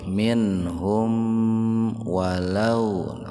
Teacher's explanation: Mim sukun ketemu fa secara terpisah. Jadi mimnya ditahan 2 ketukan biar terdengar jelas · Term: idhar sapawi